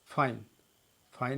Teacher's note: फाइन में आप देख रहे हैं इसका जब उच्चारण कर रहे हैं तो इसमें दो वावेल्स मिल रहे हैं, आई, ए और आई। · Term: संयुक्त स्वर